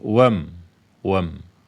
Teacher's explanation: jadi lompat saja dari Wa ke mim sukun Wam Wam alifnya ini ya Hamzah ini tidak lagi di baca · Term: Hamzah wasal